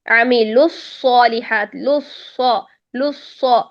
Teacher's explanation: اب وہ مشدد حرف کوئی بھی، عامل الصالحات، لص، دونوں صاد موٹے ہیں. الصالحات میں دونوں صاد موٹے ہونے چاہیے. ایسا نہیں کہ لص پہلا صاد بری کر دیں اور دوسرا صاد موٹا کر دیں، لص نہیں، دونوں صاد کا ایک ہی حکم ہے.